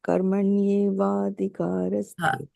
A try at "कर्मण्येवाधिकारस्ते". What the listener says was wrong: Yeah, so but don't wait. If you wait between the two, the nice flow is gone. I can say karmaṇya evādhikāraste. That's one way. Karmaṇya evādhikāraste. There's a pause between the two words. And the other one is karmaṇya evādhikāraste. It's all one word. You see, that's why in Sanskrit over here, it's written one big word. Yeah, karmaṇya evādhikāraste.